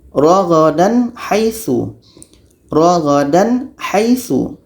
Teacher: Tak ada dengung dan harus jelas dua-duanya. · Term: izhar halqi